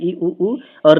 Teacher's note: संवृत वे स्वर होते हैं जिनके उच्चारण में मुख विवर छिद्र लगभग बंद सा रहता है